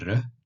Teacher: ça se prononce re r roulé re